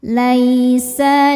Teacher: ada harfulin karena ada ya sukun sebelumnya fathah. Cara bacanya dilembutkan.